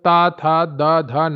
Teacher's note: त वर्ग दंत आता है। क्योंकि जब ता, थ, द, ध आप बोलते हैं तो आपकी जीभ दांतों से स्पर्श करती है।